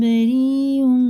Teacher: مد متصل ہے، 5 الف کے برابر کھینچیں گے کیونکہ یا ساکن سے پہلے زیر بھی ہے، کھڑے زیر کی طرح کھینچ کے پڑھیں گے.